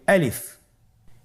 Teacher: আলিফ হরফটি মাখরাজ হলো আপনার মুখের শূন্যস্থান থেকে, গলা এবং মুখের শূন্যস্থান হতে আলিফ হরফটি উচ্চারিত হয়